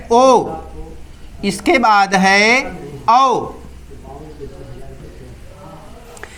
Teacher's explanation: कंठ और ओष्ठ से ओ औ का उच्चारण होता है। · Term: कंठोष्ठम